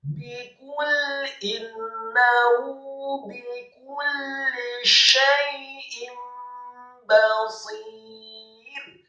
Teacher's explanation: Apabila ada nun yang sukun atau tanwin, dalam hal ini adalah hamzah yang kasrah tanwin bertemu dengan huruf ba, maka dibacanya iqlab atau diubah nunnya atau dengungnya menjadi seperti mim yang sukun.